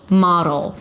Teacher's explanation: it's a D that shifts immediately to the L. Model. Make it a light D. Model and a dark L.